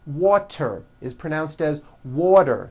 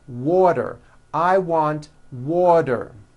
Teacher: The T turns into a D and the whole word is voiced.